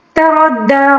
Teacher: را کو پر پڑھیں گے، را کے اوپر زبر ہے، ٹھیک ہے، اس کو پر پڑھیں گے، اور وقف کے دوران جو کھڑا زبر ہے اس میں کوئی تبدیلی نہیں آئے گی، ٹھیک ہے۔